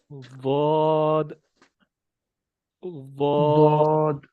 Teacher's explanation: زبان کی جو سائیڈیں ہیں وہ اوپر والے دانتوں کے دونوں جو سائیڈوں والی ہماری داڑیں ہیں نا، ان دونوں داڑوں کے ساتھ لگیں گی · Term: ضاد کا مخرج